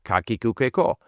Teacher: they are clear and single vowel sounds, not diphthongs.